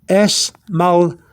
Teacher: You got it right there with a slight TH after the D